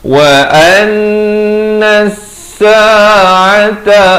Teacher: Di sini alif lam syamsiyah, lam tidak dibunyikan.